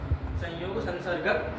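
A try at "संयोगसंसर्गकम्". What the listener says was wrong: संसर्गक, संस्कृत चल रहा है बाबा, हिंदी नहीं कि हलंत बोल दोगे।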